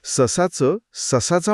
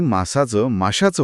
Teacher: त्याला चा जोडताना जीभ मागे टाळूकडे जाते या प्रक्रियेत स चा आपोआप श होऊन जातो